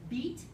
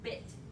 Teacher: the difference between making one vowel a high front vowel or a high near front vowel. All I do is move my tongue back a little bit.